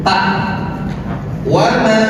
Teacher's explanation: Ta kan agak sedikit digigit ta waba. Jadi lidahnya langsung digigit saja dengan menyamarkan nun.